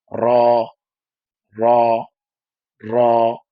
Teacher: জিহ্বার আগার পিঠ তার বরাবর উপরে তালুর সাথে লাগিয়ে পড়তে হয়